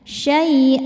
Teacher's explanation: Karena ada harakat tanwin fathah yang diwakafkan. Cara bacanya hamzahnya ini panjang dua harakat dan tidak ada bunyi n-nya lagi ya. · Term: mad iwad